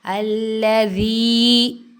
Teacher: یاء مدہ ہوئی ہے، اس کو 1 سیکنڈ ایک الف جتنا اس کو لمبا کریں گے